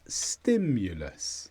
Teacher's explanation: Sti is the stress.